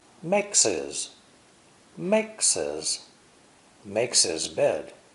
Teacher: the adjective his is usually unstressed and pronounced without the H sound